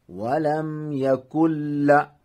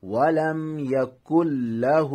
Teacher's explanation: یہاں نون کی آواز ختم ہوگی، نون سائلنٹ ہوگا، کاف کو ملائیں گے لام کے ساتھ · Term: ادغام تام